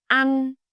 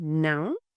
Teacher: The sound is much shorter and sharper than a. It's almost like you are cutting the sound off abruptly. Think of the u in cut.